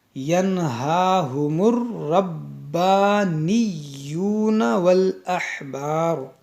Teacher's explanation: یہاں پر دیکھیں 3 حرف مشدد ہے، را با اور یا. ان تینوں حرف کو 2 بار پڑھیں گے.